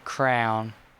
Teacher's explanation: the way I say crown is apparently a triphthong instead of a diphthong